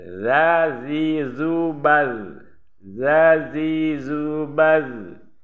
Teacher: Za ini makhrajnya di ujung lidah dengan ujung gigi yang di atas. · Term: huruf zal